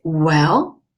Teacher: it's a third tone in Chinese it's going down and up